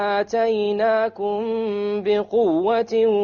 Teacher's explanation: Ikhfa shafawi, because we have a meme followed by a ba. So we have ikhfa shafawi along with a ghunna